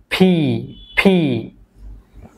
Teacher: উপরের ঠোঁট এন্ড নিচের ঠোঁট টাচ টুগেদার, অর্থাৎ দুইটা একত্রে লেগে যাবে